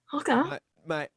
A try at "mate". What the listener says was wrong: The A has to be a little more longer and nasal. Okay, mate. Okay, mate. Okay, mate. But if you're the mate, it's not may like the A is longer. It's just like if you went, g'day, mate. G'day, And there's no T at the end of it. It's just g'day, mate.